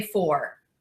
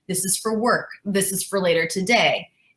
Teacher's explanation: it's very fast it sounds like there's no vowel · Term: reduction